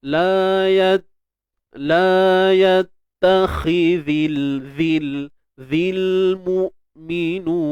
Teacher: Huruf zal jangan lupa keluarkan hujung lidah tuan-tuan, sikit je.